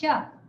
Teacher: ये है तालव्य शकार श, जहां से च बोलते हैं वहां से श बोलेंगे